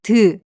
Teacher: The sound of ㄷ is somewhere between the English d and t.